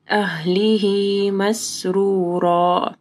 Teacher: اہلہ میں ہاں کے بعد یا ہے، مد صلہ صغریٰ ہے، ٹھیک ہے، تو 2 حرکات کے برابر یا 2 سیکنڈ کے لیے ہاں کو لمبا کرنا ہے